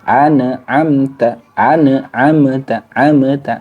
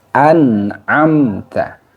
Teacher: huruf selain mim dan ba maka disebut dengan izhar syafawi yaitu mim sukunnya dibaca jelas tidak boleh ditahan tidak boleh dipantulkan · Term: Idhar syafawi